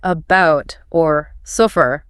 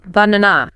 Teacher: That little unstressed us sound. It's the sound that almost all vowels in unstressed syllables reduce to. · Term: schwah